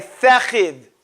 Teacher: they say sa instead of tha